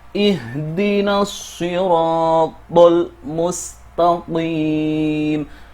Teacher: Kemudian qim di sini juga dibaca panjang, dua sampai enam harakat diperbolehkan · lam ini masih terbaca dengan jelas karena merupakan al-qamariyah, yang merupakan pertemuan al dengan huruf mim.